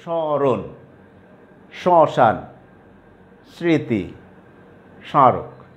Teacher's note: তাহলে প্রথম নিয়মটা ছিল শব্দের আদিতে যদি ম ফলা যুক্ত থাকে তাহলে ময়ের উচ্চারণ হয় না, তবে নাকি স্বরের উচ্চারণ হয় · আমরা নাকে উচ্চারণ করতে হবে, অর্থাৎ নাকি স্বরের উচ্চারণ হবে